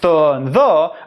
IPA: θ and ð